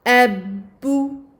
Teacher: Il s'agit d'ouvrir les lèvres pour la fatha, de ramener les lèvres à la normale pour le premier ba, le ba sakin qui est sous-entendu. Donc j'ouvre les lèvres, je ramène les lèvres à la normale et ensuite j'avance les lèvres pour la damma. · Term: shadda